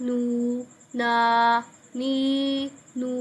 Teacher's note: ان میں ہم نے آواز کو ناک میں نہیں لے کے جانا یعنی غنہ نہیں نکالنا